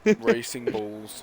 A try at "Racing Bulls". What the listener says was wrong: when you say it, it sounds like you're saying Racing Balls, man.